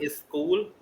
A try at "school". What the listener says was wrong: That not is school. It's school. School. No, that e sound is not there.